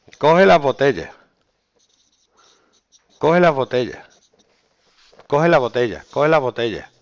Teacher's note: Aspiración y eliminación de la S al final.